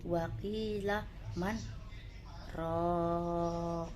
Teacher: Di atasnya ada kalimat saktah, di mana berhenti selama satu alif sejenak.